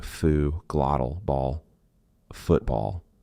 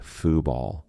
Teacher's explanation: And another one for the glottal T. When a syllable ends in T and it is followed by a consonant sound, we are going to use the glottal stop.